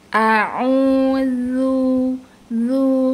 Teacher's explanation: Jadi pangkal lidah itu tidak boleh naik karena huruf zal adalah huruf yang dibaca tipis